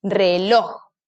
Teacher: donde cargo la voz en la última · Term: sílaba tónica